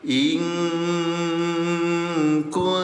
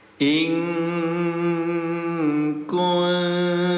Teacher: Samarkan bunyi nun sukunnya. Ya, asalnya in kuntum, jadi in kuntum. Tahan 2 harokat. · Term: ikhfa